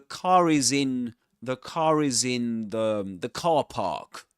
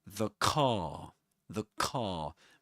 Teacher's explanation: we only pronounce the R sound in this accent when right after it comes a vowel sound